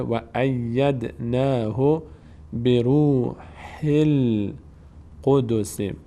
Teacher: بیناتی و ای، اینجا هم یا دو بار خوانده میشه. ید دال میلرزه در مخرج، قلقله میشه